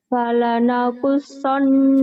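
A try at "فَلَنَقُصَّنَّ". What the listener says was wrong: Fala, kedengarannya wala ya. Fala, fala, fala. Kalau kamu kan gini, walana qulsanna, nggak apa-apa ya, nggak apa-apa karena kamu lagi sekarang konsentrasi sama lagu, sama bacaan.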